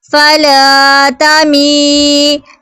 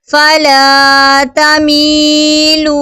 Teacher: یا سیکنڈ سے پہلے زیر ہے تو یا مدہ ہوگا، ایک الف دو حرکات کے برابر کھینچ کر پڑھیں گے. واو سیکنڈ سے پہلے پیش ہے تو واو مدہ ہوگا، یعنی کہ یا مدہ اور واو مدہ حروف مدہ میں سے آ رہے ہیں.